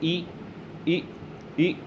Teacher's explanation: जब ई और बड़ी ई को बोलते हैं तो उसका उच्चारण स्थान होता है हमारा तालव्य से, यानी तालु से। कंठ से थोड़ा सा ऊपर जाके ऊपर के साइड जो हिस्सा होता है उसे हम बोलते हैं तालु दोस्त।